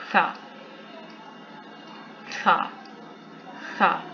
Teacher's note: सामने वाले 2 दांत यानी सनाया उलिया की नोक से ज़ुबान की नोक लगेगी